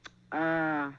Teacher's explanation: there's a dental click